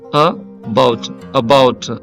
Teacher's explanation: ఈ first syllable unstressed అన్నమాట. Second syllable stressed